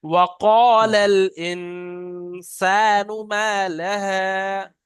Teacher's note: শুরু থেকে ওয়াওটা টান হবে না, কফটা টান হবে।